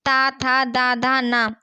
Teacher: दंत व्यंजन दांतों से बोलते हैं। हमारी जीभ दांतों पर लगे उसे हम दंत व्यंजन कहते हैं।